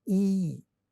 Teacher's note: if you look at the tongue position in your mouth, you realize that E comes from the front part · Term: front vowel